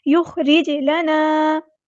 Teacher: یخرج لنا، خا ہمارا ہیوی لیٹر ہے، پورا ادا کریں گے، را یہاں پہ ہمارا باریک ہے اور جیم ساکن کو ہم نے ہلانا ہے، قلقلہ ہوگا ، اس کو دھیان سے پڑھنا ہے، خا ساکن کو ہلانا · نے ہلانا ہے، قلقلہ ہوگا، اس کو دھیان سے پڑھنا ہے، خا ساکن کو ہلانا نہیں ہے ، یخرج نہیں بنا، یخرج لنا، الف مد آ گیا تو